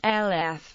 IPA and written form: ˈɡlɪf (glyph)